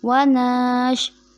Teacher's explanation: व नशकुरुका, यहाँ जो गलती होती है उसको नून को शीन के साथ खींच कर मिला दिया जाता है